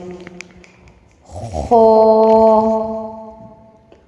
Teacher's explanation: ادنی حلق سے خو ادا ہوتا ہے